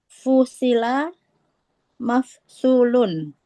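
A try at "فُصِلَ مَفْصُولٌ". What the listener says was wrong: nah Masya Allah Mumtaz ya.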